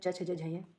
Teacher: ये आ गए तालव्य वर्ण ये तालु से बोले जाते है